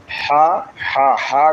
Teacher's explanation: হা হা হা গলার মাঝখান থেকে উচ্চারিত হবে।